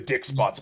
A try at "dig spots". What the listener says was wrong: And dig spots, not dick spots. dig, Not dick.